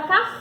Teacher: palavra para ela tem uma sílaba tônica quando eu falo então eu falei com mais intensidade ou seja a última sílaba da palavra